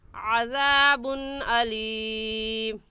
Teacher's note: अज़ाबुन की तनवीन पर हम गुन्ना नहीं करेंगे, क्योंकि तनवीन के बाद हरूफ हल्की में से हमज़ा आ गया है, इसलिए इस तनवीन पर गुन्ना नहीं करेंगे बल्कि जल्दी से पढ़ जाएंगे।